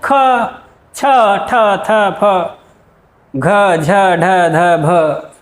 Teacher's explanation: महाप्राण देखा जिन्हें बोलने में ज्यादा प्रेशर लग रहा है, जैसे ख छ ठ थ फ घ झ ढ ध भ, तो यहाँ आवाज में थोड़ा भारीपन आता है।